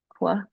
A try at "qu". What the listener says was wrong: Keep pull. You've got two sounds there still. I think I thought I heard it when you first unmuted. like in cats, isn't it? Like in cats and cat. from to woo. I wish we taught it that this makes k and this makes woo, because that is really the case.